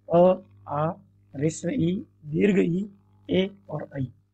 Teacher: जैसे ह्रस्व उ, दीर्घ उ, ओ और औ, ये आपके वृत्ताकार स्वर हैं। और जिन स्वरों के उच्चारण में होठ गोल नहीं होते हैं उन्हें हम अवृत्ताकार कहते हैं